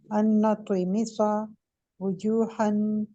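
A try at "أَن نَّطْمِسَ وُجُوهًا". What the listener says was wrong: सारा इकट्ठा पढ़े, थोड़ा सा ना अलग अलग लफ्ज काट काट के ना पढ़े।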